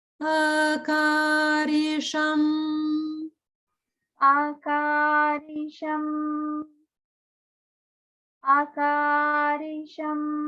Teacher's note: Akarisham has no swara marks, which means that the whole thing is just the middle note.